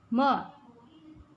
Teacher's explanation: म का उच्चारण स्थान क्या होगा नासिका यानी नाक से